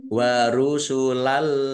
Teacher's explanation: bacaan Idgham bilaunah masuk dengan tidak mendengung langsung masuk ke huruf lam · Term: idgham bila gunnah